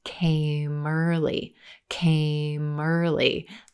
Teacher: that final M sound at the end of came linking and connecting into the word early